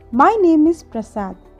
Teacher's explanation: As you have observe లాస్ట్లో నా voice కొంచెం తగ్గింది. సో సెంటెన్స్ లాస్ట్లో మన వాయిస్ తగ్గుతుంది కాబట్టి ఇంటోనేషన్ సింబల్ లాస్ట్ వర్డ్ ముందు పెడతాం. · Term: ఫాలింగ్ టోన్